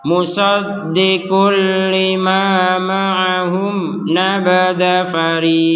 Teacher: Nah, sebelum melanjutkan, nah ini penting, ini ditekankan huruf qaf. Ya, kalau kita berhenti tadi nabada fariqo, maka huruf qaf ini dipantulkan